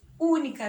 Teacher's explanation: Eu tenho 3 sílabas e a antepenúltima sílaba é mais forte